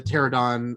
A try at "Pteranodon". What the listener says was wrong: Pteranodon, that's right. We're both like to leave out one little part there, syllable.